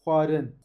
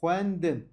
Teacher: X ve V yani H ile V ile seslendirirsek huarın bakın. H gırtlaktan çıkıyor. V de ağızdan. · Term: H ve V sesi